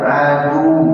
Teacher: Jangan dipanjangkan. Adu nggak panjang, hanya ditekan saja. Adu. Kalau diwasal baru dipanjang.